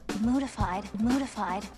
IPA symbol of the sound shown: d